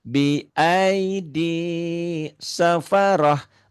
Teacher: Tapi tak marbutoh itu apabila dihentikan bunyinya bukan tak, tapi jadi hak.